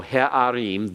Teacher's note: Remember, that's because you have a guttural with a comets under it that is unaccented. It's unaccented because the accent comes on im.